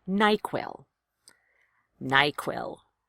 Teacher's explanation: Equal stress on both syllables. It's treated like a compound word.